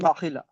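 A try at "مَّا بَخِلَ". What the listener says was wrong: এই নুন সাকিন পড়লে হবে না, মান বললে হবে না, মাম। দুটো মিম বলতে হবে, মাম। মাম।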